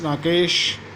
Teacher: राकेश में आ और ई मिलकर के ए